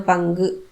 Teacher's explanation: கு அப்படிங்கறது குட்டியா ஒலிக்குது. அரை மாத்திரை அளவுக்குதான் ஒலிக்குது. அதனால இது குற்றியல் உகரம்.